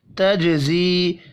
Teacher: جیم ساکن پر قلقلہ کریں گے